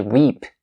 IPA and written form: riːp (reap)